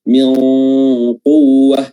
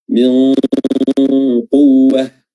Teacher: ikhfa dari nun atau samar-samar dari nun mati ini ditandai dengan meletakkan makhraj kita di tempat makhraj huruf qaf. Min quwwah, yaitu di pangkal lidah.